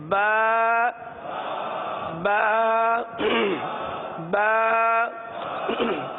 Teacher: ہونٹوں کے تر حصے سے ادا ہوتا ہے۔ با دونوں ہونٹوں کے تر حصے سے ادا ہوتا ہے۔